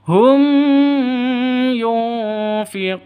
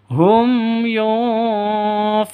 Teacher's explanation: mim mati bertemu dengan Ya jelas terang tidak boleh dengung tidak boleh panjang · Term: izhar syafawi